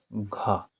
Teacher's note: कंठ क्योंकि घ का उच्चारण स्थान जो होता है वह कंठ ही होता है